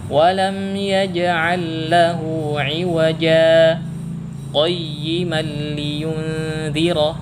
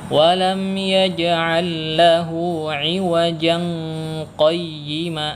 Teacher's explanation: Tujuannya agar tidak terjadi ikhfa antara tanwin yang ada di huruf ja dengan huruf qa. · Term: saktah